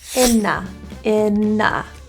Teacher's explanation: we have an N for in and a vowel next, so we can think of it like na, inna, rather than in-a.